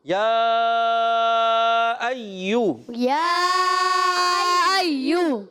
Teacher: دیکھیں ہم نے پہلے مد کو نہیں کھینچا تھا، اب کھینچا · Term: مد منفصل